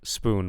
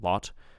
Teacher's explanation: I don't think there's a vowel length difference, but there's a vowel quality difference, of course. One's oo and one's ah